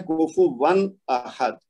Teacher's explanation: یعنی نون کی آواز ظاہر کر دیتے ہیں ہم، اس کو لمبا نہیں کرتے. تو یہ ہے کوفو ون احد، تو یہ ہوگا اظہار.